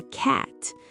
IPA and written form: kæt (cat)